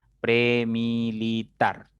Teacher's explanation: La mayor fuerza, la mayor intensidad de la voz está en la primera sílaba contando de derecha a izquierda, en tar. Por lo tanto, no va a llevar tilde porque es una palabra aguda, ¿ya?